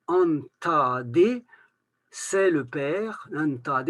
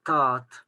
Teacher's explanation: là le D va être prononcé en liaison, on va l'entendre dans la liaison, alors que dans la finale absolue, il va devenir T